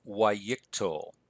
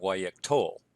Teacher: also notice that the accent has shifted back to the second-to-last syllable